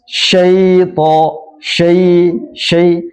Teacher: syin yang seharusnya terbuka fathah sya terseret menjadi tipis